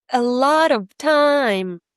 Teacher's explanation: And now time is going to be the biggest, right? So, make sure it's a bit higher up in pitch compared to the rest.